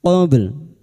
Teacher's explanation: Huruf ba memiliki sifat pantulan yaitu qalqalah sugro yang mati asli di tengah kalimat qabl. Jangan lupa dipantulkan dan kita lunakkan dengan huruf lam.